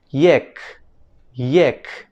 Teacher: en fonética se le conoce como aproximante palatal Sonora